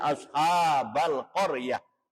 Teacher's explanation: Tulisannya qaryati dibaca qaryah karena ada tanda waqaf mim, artinya mutlak, berhenti. Itu ta yang bundar namanya ta marbutoh. Ketika waqaf, ketika mandeg, ketika berhenti, itu diiwad menjadi ha. Jadi tulisannya qaryati dibacanya qaryah.